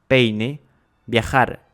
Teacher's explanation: ni pour l'une ni pour l'autre voyelle, il y a diphtongue